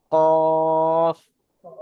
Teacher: জিবের পুরো গড়া একদম শেষ, জিবের শেষ এবং সেই বরাবর উপরের তালু। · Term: কফের মাকরাজ